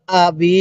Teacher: বা এর মধ্যে আমরা এক আলিফ টান দিব তবে হামজা এর মধ্যে টান দিব না কারণ জেরের পরে ইয়া সাকিন থাকলে সেখানে এক আলিফ টানতে হয়